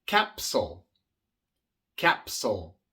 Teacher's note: Igual tenemos una P, una consonante sorda y por eso la S que le sigue viene siendo sorda.